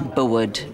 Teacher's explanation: my diphthong here is ua, like in sewer, but which we'd never expect in this context of Bowood